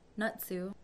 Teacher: the first vowel is pronounced stronger than the other. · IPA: nə́c̓uʔ